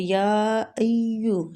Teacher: یا کو کھینچیں گے، تقریباً 4 الف اس میں مد ہو رہی ہے